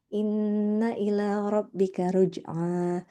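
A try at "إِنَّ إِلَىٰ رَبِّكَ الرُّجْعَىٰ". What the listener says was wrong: Ada tasydid, ada tasydid di ro-nya. Inna ila rabbika ruj'a. Rabbika ruj'a.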